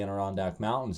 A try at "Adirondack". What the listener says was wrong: It's Adirondack. There's no N.